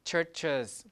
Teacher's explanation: you add a schwa to make it a syllable